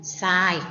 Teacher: ทหารกับเรือควบกันจึงออกเสียงทรายก็คือออกเสียงซอนั้นเอง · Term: คําควบกล้ําไม่แท้